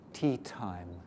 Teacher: For English, the tip of the tongue is just blown off by the light air pressure.